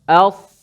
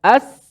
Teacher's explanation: Betul, keluarlah angin tu. Dan huruf sad sudah pastilah dia beza antara sad dengan sin ni ialah pada sifat tebal dia. Okey. Kalau tak ada tebal tu samalah.